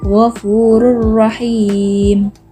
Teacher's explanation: Contoh yang kedua, ghafurur rahim, terdapat dhammatain bertemu dengan huruf ro. Cara membacanya, masuk tidak mendengung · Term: idgham bila gunnah